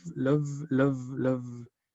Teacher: porque es love, vibra. Incluso vibra hasta los labios. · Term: la D solita